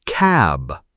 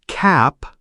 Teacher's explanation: Notice the final p and b. Your voice vibrates on b, but not on p.